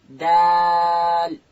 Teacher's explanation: دال ادا کیږي د ژبې سر به د لوړې زامې د مخ ته دوه غاښو و بیخو ته ورلو